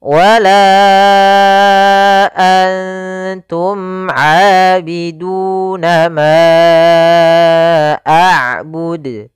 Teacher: Pada lafal wala antum, pada lafal la kembali lagi kita dapati hukum tajwid berupa mad jaiz munfasil, yaitu ditandai dengan adanya huruf hamzah yang datang setelah huruf mad, di sini huruf alif. Maka kita panjangkan untuk huruf la sepanjang 4 harokat dan kita namakan di sini hukum tajwid mad jaiz munfasil 4 harokat.